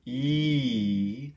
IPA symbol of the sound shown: i